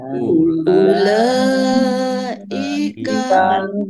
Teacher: Ulaika lam fathah berdiri mat tobi'i, tetapi karena bertemu dengan huruf hamzah dalam satu kata maka menjadi mat wajib muttasil, dibaca panjang harus 5 harokat.